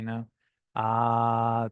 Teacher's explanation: there's the ah sound. Feel free to just do it, ah, back of the throat.